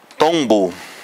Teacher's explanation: Então, quando se diz, por exemplo, tombo, ao pronunciar o tom, os lábios já se tocam naturalmente e já se prepara aí a consoante B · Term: Bilabiais